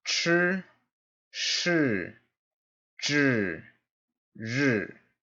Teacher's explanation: there's kind of an invisible R at the end of all these syllables